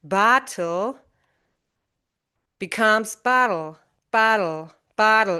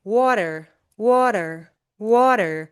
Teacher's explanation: when a T or T occurs between two vowel sounds, it sounds like a quick, soft d, d.